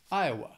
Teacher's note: Iowa has three syllables and the stress is on that first syllable